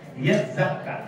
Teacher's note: Yatzakka, hilang bunyi ta. Ta itu diganti zai. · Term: idgham